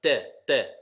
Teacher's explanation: la lettre n'est pas emphasée ce n'est pas une lettre emphatique elle n'est pas pleine et c'est le bout de la langue on appuie